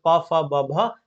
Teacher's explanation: पवर्ग प फ ब भ ये ओष्ठ से बोले जाते हैं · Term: ओष्ठ ध्वनि